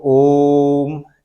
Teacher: ने दीर्घ स्वर पढ़ा उसमें दोगना समय लग रहा था और प्लुत स्वर में हराव स्वर की तुलना में तीन गुना अधिक समय लगेगा